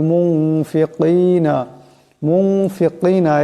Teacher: তারপর ফা আসছে এখানে ফা আছে এ ফা ইকফার হরফ থেকে নুন সাকিনকে এক আলিফ পরিমাণ ইকফার গুন্না করিয়া পড়তে হবে